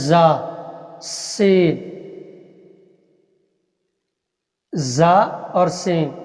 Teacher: سین زا اور شین، ان کو سٹی کے ساتھ ذرا پڑھا جاتا ہے · زا کا جو ہے نا مخرج، یہ دونوں دانت جوڑ کر تھوڑا سٹی کے ساتھ اس کو ادا کرنا ہے